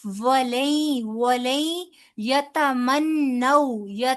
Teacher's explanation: نون ساکن کے بعد یا آ رہا ہے، یرملون میں یومن میں سے ہے، لہٰذا یہاں پر بھی ادغام بالغنہ ہوگا